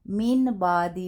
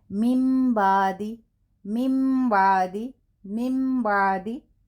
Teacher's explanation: نون کو میم کے ساتھ غنہ کے ساتھ بدل کر ادائیگی کریں گے. تو ہم یہاں من بادی نہیں، ہم یہاں ادا کریں گے مم بادی. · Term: اقلاب